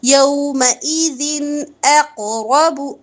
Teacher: ذن میں دیکھیں دو زیر کی تنوین کے بعد حمزہ آ رہا ہے، یہاں اظہار حلقی ہوگا